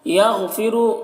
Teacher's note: غین کو پر پڑھیں گے، را کو بھی پر پڑھیں گے